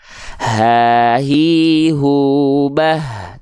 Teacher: ha besar itu dilafalkan dari pangkal tenggorokan, dia mengalirkan nafas dengan karakteristik biasa